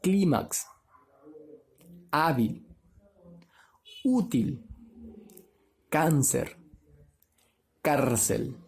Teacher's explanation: La mayor fuerza de voz está en la penúltima sílaba y va acentuada. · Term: palabras graves